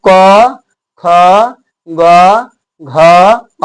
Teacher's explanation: और ये शब्द का उच्चारण आपको कंठ से होता है